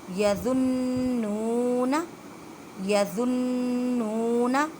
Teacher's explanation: نون مشدد ہے گنہ کریں مینس کے ایک الف کی مقدار میں آواز کو ناک میں لے کے جائیں